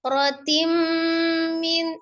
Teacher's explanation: Hukumnya adalah idgham bi ghunnah. Idgham dilebur, ditasdidkan langsung ke mimnya. Bi ghunnah dengan ghunnah.